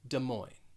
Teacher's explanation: first word you're going to have that schwa duh moin so in that second word it's almost like you're dropping that es